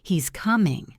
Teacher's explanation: If I say it with a falling tone at the end, he's coming, it's a simple statement of fact I'm just telling you. But if I say it with the rising tone at the end, he's coming, it suddenly becomes a question.